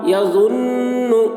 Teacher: نون کے اوپر تشدید ہے اس لیے نون میں غنہ ہوگا